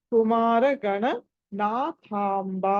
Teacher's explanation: థ అన్నది మహాప్రాణం ఒత్తి పలకాలి త థ ఏదైతే ఉందో రెండో ఆ త వర్గంలోని రెండో అక్షరం త